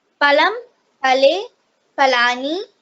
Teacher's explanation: One thing you have to be conscious of is the Mahaprana, because Ha has a Mahaprana, which means you have to exhale a bit of air while pronouncing it.